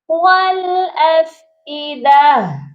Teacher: جب ہم یہاں پر وقف کریں گے تو اس تا کو ساکن کریں گے تو ہا کی آواز آئے گی، افئدہ تا، یہاں پر بہت سے لوگ غلطی یہ کرتے ہیں، افئدہ تا پڑھتے ہیں، تا کو بھی پڑھتے ہیں، یہاں پر تا کی آواز نہیں آئے گی، یہاں پر ہم ہا کو سائلنٹ کریں گے، تو یہاں وقف کیسے ہوگا، والافئدہ، ٹھیک ہو گیا۔